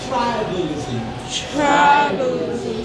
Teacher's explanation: the sound that follows the B, okay, it's a short sound, and it's going to be a weak sound. Short sound is weak.